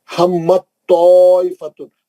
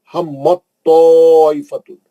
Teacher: اب تا نہیں پڑھیں گے، توئی میں چلے جائیں گے